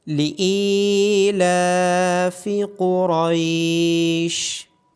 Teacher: حمزہ کے بعد یا مدہ ہونے کی وجہ سے حمزہ کی آواز کو لمبا کیا جائے گا، لام کے اوپر کھڑی زبر ہونے کی وجہ سے لام کو لمبا کیا جائے گا، قوف اور را کو موٹا پڑا جائے گا۔